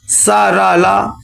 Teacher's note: सा, रा, ला ये दंत या बर्थ से निकलते हैं। बर्थ माने मसूड़ा।